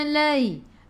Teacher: ai'u daripada kerongkong, bukan daripada hidung